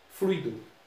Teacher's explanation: Contando de trás para frente, fluido. Primeira, segunda. A tônica é a segunda. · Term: paroxítonas